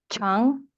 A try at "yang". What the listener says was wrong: Yeah, yang, not chung. Jump a yang.